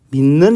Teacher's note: 그러면 이 디귿이 예사소리인 디귿에 영향을 주죠. 니은이 디귿에 영향을 주죠. 그럼 이 디귿은 니은으로 바뀝니다. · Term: 완전동화